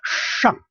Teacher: The pronunciation for sh, you may remember it's 上. Curl the tongue backward a little bit.